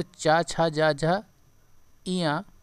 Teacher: तालव्य की बात करें तालु से जिनका होता है